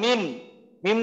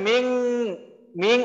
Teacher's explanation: যেমন মিম আমরা পড়তাম মিম, মিম দুধের মিম পড়তাম, এখন আমাদের পড়তে হবে মিং, মিং অনুস্বর দিয়ে পড়ে আবার এটাকে একটু এক আলিফ পরিমাণ গুণনাও করতে হবে